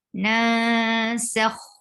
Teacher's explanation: There's noon sakina. After noon sakina, you find harfe ikhfa. So you will hide the sound of noon. Nasakh. And for fatha, open your jaw.